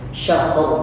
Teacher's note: Kalau misalkan kita mau sukunkan atau berhenti, ra-nya ditebalkan, ra tafkhim namanya.